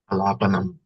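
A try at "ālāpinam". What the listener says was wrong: No, you should not pronounce ma. If you pronounce ma, it's going to be wrong. It has to be sound coming from the nose. Alapinam. Alapinam.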